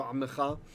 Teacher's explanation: The Rafa here is showing it's a tradition to not say the vocal schwa